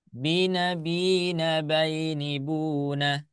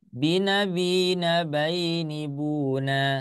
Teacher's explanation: yang terakhirnya jangan dipanjangin ya